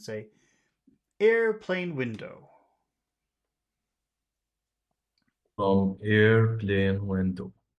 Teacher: tone to the beginning to the the important word air but we have to finish our phrase in a low tone so then we'll start going down